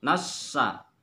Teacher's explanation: Sa makhrajnya ialah tengah lidah dengan langit-langit atas.